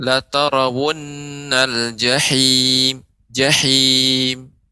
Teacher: Kalla law ta'lamuna 'ilmal yaqin la tarawunnal jahim. Jahim, ha, ya ini ha kecil. Maka di tengah tenggorokan